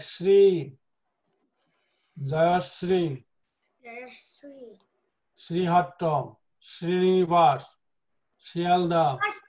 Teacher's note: So it is palatal Sha